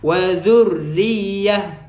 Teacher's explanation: tekankan huruf ra tajdid, huruf ya pun tajdid